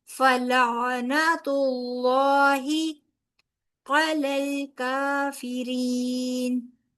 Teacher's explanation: लाम को आइन के साथ मिलाएंगे